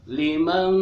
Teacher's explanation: ada nun mati bertemu kaf, itu ikfa, dibacanya eng dan disamarkan ya. Agak ditahan si engnya.